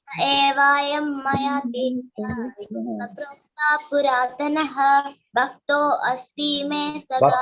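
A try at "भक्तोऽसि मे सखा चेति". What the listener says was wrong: No, together. Bhakto sime saka chedi.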